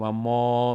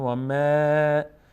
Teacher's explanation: میم فتحه داره بعدش الف صدای آ میگیره و پر هم نمیشه. از اون 8 حرف صاد و زاد و تا و ذا و غین و قاف و خا و را نیست، به همین خاطر پر نمیشه.